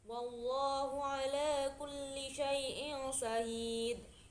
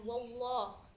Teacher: itu bacaannya tafkim atau dibaca tebal karena ada lam jalalah yang sebelumnya itu berharokat fathah